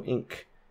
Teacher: that n is not an M it is a velar n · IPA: [ŋk]